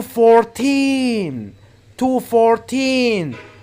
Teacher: so you have to put the stress on 14 make it longer and louder